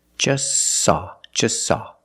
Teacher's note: You link the S with the S. Link them together.